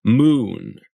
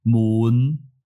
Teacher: moon we start on ooh before we get to ooh moon in Cantonese you'll start and stay on ooh